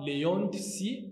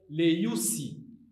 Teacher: le omicron, quand il s'allonge, devient ou